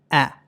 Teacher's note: సో, ఇది అటు ఆ కాదు, అలాగే ఇటు ఏ కాదు. ఆకి, ఏకి మధ్యలో ఉన్నటువంటి సౌండ్. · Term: షార్ట్ ఏ సౌండ్ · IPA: /æ/